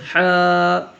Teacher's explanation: কন্ঠস্বরের মাঝখান থেকে উচ্চারিত হবে হা ঝির ঝির ও নরম আওয়াজে ঝির ঝির ও নরম আওয়াজে